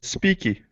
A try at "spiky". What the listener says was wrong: Okay, but long I sound. Spiky. Spiky.